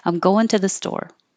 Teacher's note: I think I emphasized going